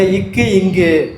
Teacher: நாவின் முதற்பகுதி அன்னத்தின் அடிப்பகுதியை தொடுவதால் இந்த இக்கு இங்கு தோன்றுது